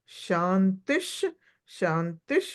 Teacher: శాంతి శాంతి శాంతిహి ఆ స అనకూడదండి ష అనాలి శాంతి శాంతి శాంతి విసర్గ వచ్చిన తోట ఇంకొక శకారం పలకాలి